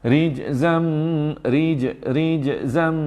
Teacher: Rijzam, rijzam, ada qalqalah lah. Jim qalqalah kecil je.